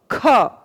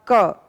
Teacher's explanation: ख के बोलने में के की अपेक्षा हवा ज्यादा ली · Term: महाप्राण